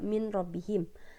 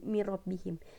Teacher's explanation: jadi mirrobbihim ketika itu menjadi ketika idgom itu dia menjadi mirrobbihim jadi seolah nun sukun itu enggak ada lagi gitu